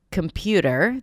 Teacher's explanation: Like we have a primary stress for words, like computer, the 'pu' is the primary stress.